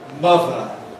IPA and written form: ˈmʌðə (mother)